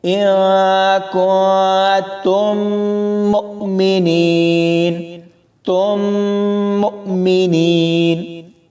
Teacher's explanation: یہاں اس آیت میں یہ الفاظ دیکھیں، اِن کُنتُم مُؤْمِنِین، تم مؤمنین۔ اس میں میم ساکن کے بعد پھر میم ہے، تو یہاں ہم دونوں میم کو ایک کر کے پڑھیں گے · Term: ادغام شفوی